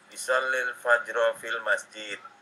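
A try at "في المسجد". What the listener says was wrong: Masjidnya pendek, fil masjid.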